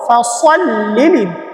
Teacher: এই যে সদটাকে ঠিক রাখবো, এটা মোটা করে উচ্চারণ করব